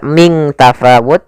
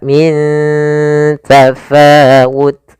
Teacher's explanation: ikhfa yaitu adanya nun sukun bertemu dengan huruf ta cara membacanya nunnya disamarkan ke huruf ta